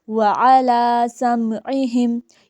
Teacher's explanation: الف علی لام کے اوپر کھڑی زبر ہے، اسے ہم 1 الف کے برابر لمبا پڑھیں گے